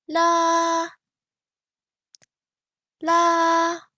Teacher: the top of your focal range and it sounds like singing it is high and it is flat so it doesn't rise it doesn't fall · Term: first tone